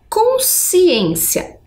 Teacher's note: quando esse encontro é um dígrafo percebam que é um som único né consciência dá impressão até que é o som da letrinha s